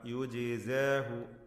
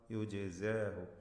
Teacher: ജീമിൻ്റെ സുക്കൂൻ ഖൽഖല നൽകി ശബ്ദം ചലിപ്പിച്ച് ഉച്ചരിക്കണം.